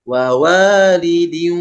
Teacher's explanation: masuk ke wau disertai dengung bunah itu artinya disertai dengung maka wau posisinya yang tadinya tidak dengung menjadi dengung